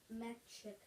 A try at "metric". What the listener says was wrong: Not ch. It's metric. Metric.